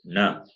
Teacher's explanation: Na is nasal plus cerebral. Cerebral plus nasal.